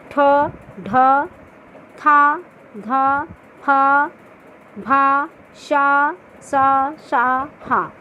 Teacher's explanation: इनके अंत में हा की ध्वनि आती है। ये वर्ग के दूसरा और चौथा वर्ण जो होता है वो महाप्राण व्यंजन कहलाता है।